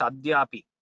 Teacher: the dakara is alpa prana